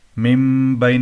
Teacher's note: اقلاب نون کو میم سے بدلنا، ٹھیک ہے، یہاں پر غنہ ہوگا، اقلاب ہوگا